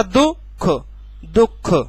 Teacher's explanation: ध्वनियों के मध्य, ध्वनियों के बीच में अल्पकालीन ठहराव, दो और खा के बीच में हल्का सा रुकना। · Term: संगम